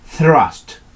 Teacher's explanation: Es la combinación TH que se pronuncia con la lengua entre los labios, entre los dientes.